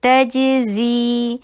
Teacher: तजज़ी जीन में जी को 2 हरका लॉन्ग कीजिए